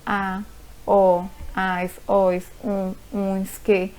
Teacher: monossílabas átonas, que têm a pronúncia fraca